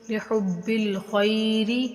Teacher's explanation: لِحُبِّ الْخَيْرِ، یہ تینوں بغیر کھینچے اور با تشدید کی وجہ سے تھوڑا سختی کے ساتھ پڑھا جائے گا